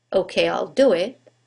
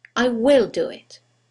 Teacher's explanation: when we use the contraction there is no stress on the contracted form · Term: contractions